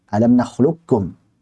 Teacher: Kalau yang kuat biasa seperti qaf ketemu kaf atau dal ketemu ta, maka itu masih kamil. Jadi qaf ketemu dengan kaf, idgham kamil.